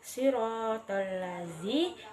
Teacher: kalimat siratal lazi, di mana terdapat huruf dzal yang makhrajnya di ujung lidah bertemu dengan ujung gigi seri atas, dan kemudian huruf shad yang makhrajnya di ujung lidah bertemu dengan pangkal gigi seri bawah.